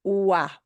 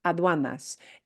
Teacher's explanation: that UA diphthong is a tough one for English speakers. Ua. It winds up being like a W